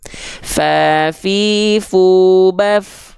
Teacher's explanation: Nih huruf fa dia mengalir nafas karena dia mengalir suara juga, dari segi suara dia mengalir. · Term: rokhwah